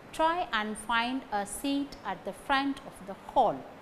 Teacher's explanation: The words that gain stress are try, find, seat, front, hall.